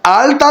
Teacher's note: আলতা শব্দটি এসছে আমাদের দন্ত থেকে। এই আলটা শব্দের ল আসছে দন্ত থেকে।